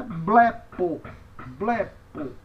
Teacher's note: Então, primeira sílaba é acentuada, blepo, blepo.